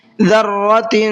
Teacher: تنوین کے اندر اخفا کریں گے، اظہار نہیں کریں گے، تھوڑا سا غنہ کریں گے، ناک میں آواز کو چھپائیں گے